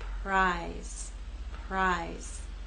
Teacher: down here is voiceless you will not feel vibration here again R will begin without vibration and then you'll add your voice as we move into I